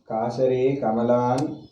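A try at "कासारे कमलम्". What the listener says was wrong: Again, you long as a short and short as a long. You always, this is the biggest defect. So far I have seen it. Everywhere the same mistake. Kasare, what is kasare?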